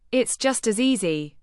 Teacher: Stress easy to link back to the original preference